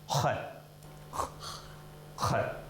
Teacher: Это резко и с храпом, как у грузин, у осетин, у прочих кавказских товарищей.